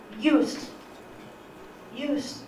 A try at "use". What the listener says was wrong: Use. You pronounce the voiceless fricative as an affricate. Use. You should pronounce it as use.